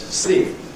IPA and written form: sliːp (sleep)